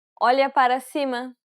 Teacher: it should sound like an l and a y sound remember you want to use the middle part of the tongue to contact the roof of your mouth